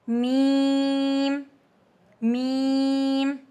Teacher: Both lips close और यह light letter है। · میم دونوں ہونٹ بند کر کے میم ادا ہوتا ہے. بوتھ لپس کلوز، اور یہ لائٹ لیٹر ہے.